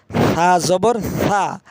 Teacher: ছা বলতে হবে জিহ্বার আগা সামনের উপরের দুই দাঁতের আগার সঙ্গে লাগিয়ে ছা নরম করে